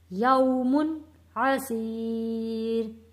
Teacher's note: یا ساکن سے پہلے زیر ہے، حروف مدہ ہے، سی، ایک الف کے برابر کھینچ کر پڑھنا ہے